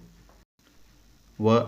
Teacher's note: ಹಲ್ಲು ಮತ್ತು ತುಟಿಗಳ ಸಹಾಯದಿಂದ ಹುಟ್ಟುವ ಅಕ್ಷರಗಳನ್ನು ದಂತೌಷ್ಟ ಅಕ್ಷರಗಳು ಎನ್ನುವರು ವ ಅಕ್ಷರ